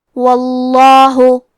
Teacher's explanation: کلمت واللہ کیونکہ حرف الواو پہ زبر ہے تو لفظ الجلالہ کلام کا حکم ہے تفخیم، لہذا ہم حرف اللام کو موٹی آواز میں پڑھیں گے. واللہ، کلمت خبیر میں خا کی ادائیگی حلق کے اوپر والے حصے سے ہے، خا حروف التفخیم میں سے ہے، تو ہم یہ حرف کو موٹی آواز میں پڑھیں گے.